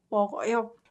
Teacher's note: So this word is pronounced 저녁을 먹어요. You combine this 그 sound with 어 vowel